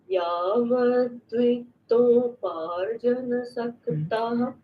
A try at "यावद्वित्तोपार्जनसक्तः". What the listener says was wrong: Again, it's not dvitto, vitto. Vitto.